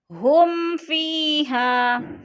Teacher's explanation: ہم فیہا، میم ساکن کے بعد فا کے ہے تو ادھر اظہار شفی، یعنی غنہ نہیں کریں گے، لفظ کو ظاہر کر کے پڑھیں گے، اور فی پہ یا مدہ، یا ساکن سے پہلے فا کے نیچے زیر ہے تو یا مدہ، یا مدہ کو بھی ہم نے 1 الف 2 حرکات کے برابر لمبا کر کے پڑھنا ہے، اور ہا پہ الف مدہ۔